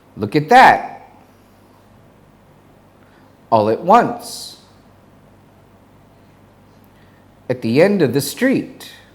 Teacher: at gets reduced to it as in look at me